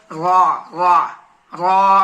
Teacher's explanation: پشت زبان قریب سیرہ زبان تالو سے مل کر را ادا ہوتی ہے